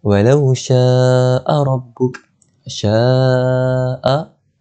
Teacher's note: Cara bacaannya adalah 4 ataupun 5 harakat panjangnya. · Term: mad wajib muttasil